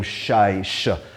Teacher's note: it became shai, sh, because in Arabic there is no ch sound except, I think, Iraqi dialect or something, but nobody has, very few people pronounce it with a ch, so it's sh.